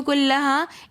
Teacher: کلہا میں بھی الف مدہ ہو رہا ہے تو اس لیے ہم اس کو کلہا 1 الف کی مقدار کھینچ کر پڑھیں گے